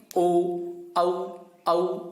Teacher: ओ और औ कंठोष्ठ से बोले जाते हैं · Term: कंठोष्ठम